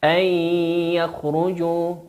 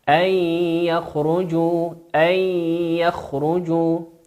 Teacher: تدغم وتقرأ بغنة، أن يخرجوا، والغنة مقدارها حركتين